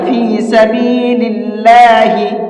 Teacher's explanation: اللہ کے لام کو باریک کر کے پڑھیں گے، یہاں فی سبیل اللہ نہیں پڑھنا ہے، باریک پڑھنا ہے فی سبیل اللہ۔